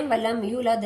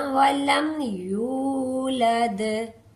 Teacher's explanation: वम यूद यू वाऊ मद्दा है। वाऊ से पहले पेश आ गई है। इसको हम एक अलिफ के बराबर लंबा करके पढ़ेंगे।